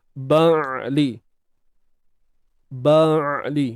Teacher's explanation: huruf ain ni kita kena sempitkan bahagian tengah kerongkong kita. Sempitkan bunyi dia.